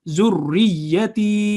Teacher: Ra is joining with ya, so zurriyati. And ta has a ya of elongation because there is a sukoon on it, so it would be long.